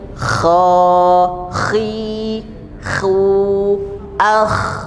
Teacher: Dia sukun tetap bunyi tebal seperti ada bunyi o tapi dari dalam mulut, bukan dari luar mulut atau dari bibir